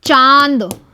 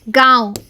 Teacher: नाक के द्वारा कम हवा निकलती है और मुंह के द्वारा ज़्यादा हवा निकलती है तो उसे बोलते हैं अनुनासिक